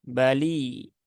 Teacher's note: Huruf ba dia tidak ada percikan udaranya, tidak seperti orang Jawa ketika berbicara ba ya dengan ba, nah, begitu.